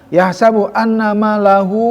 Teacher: mad silah tawilahnya panjang ya. Itu dikasih 4 harokat